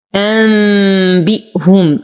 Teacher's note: نون ساكن وبعدها الباء في كلمة واحدة فالحكم إقلاب مع غنة كاملة